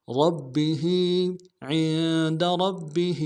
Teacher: را کو موٹا ادا کریں گے، با کے ساتھ ملانا ہے، با کے اوپر تشدید زور دیں گے اور ہا کے نیچے کھڑی زیر ہے ایک مقدار میں کھینچیں